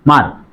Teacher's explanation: মার দুইটা বর্ণ একসাথে উচ্চারণ হচ্ছে এবং শেষে ব্যঞ্জন হচ্ছে অর্থাৎ স্বরধ্বনি উচ্চারণ হচ্ছে না । এটা হচ্ছে বদ্দাক্ষর। মার আ মার